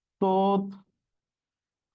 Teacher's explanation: দেখো তাহলে এটার উচ্চারণ কি হবে, হয় সাথে জফলা আছে, তার মানে থ মহাপ্রাণ ধ্বনি দ্বিত্ব হবে না, তার আগের বর্ণটা দ্বিত্ব হবে, ত দুইটা হবে, তাহলে তথ্য এর উচ্চারণ হচ্ছে তথ্য।